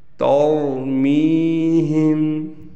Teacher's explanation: تَرْمِيهِمْ میں را موٹا پڑھا جائے گا، گرین کلر میں لکھا گیا ہے، لیکن تا کو ہم باریک پڑھیں گے۔ کل کی ویڈیو میں بھی میں نے بتلایا تھا کہ ایک حرف کو موٹا کرنے کے لیے دوسرے حرف کو ہم ہرگز موٹا نہیں کریں گے، جو حرف موٹا ہے صرف اسی کو موٹا پڑھا جائے گا۔